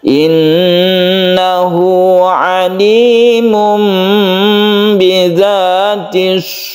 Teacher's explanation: nah sudur ini rnya dibaca tebal jadi ini agak mecucu ya bibir kita itu agak monyong atau mencucu untuk menyempurnakan ro ini dibaca tebal karena ro ini sebelumnya ada dah maka dia itu dibaca tebal